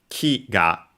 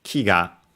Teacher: So if I were to add a particle, it would become ki-ga. Ki, high, and ga, low.